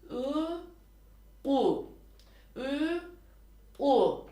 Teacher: ne Tam yumuşak ü harfi çıkıyor ne de sert bir u harfi çıkıyor bu seslendirme ikisinin ortasında bir seslendirme